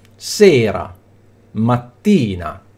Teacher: l'accento cade sulla penultima sillaba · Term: piane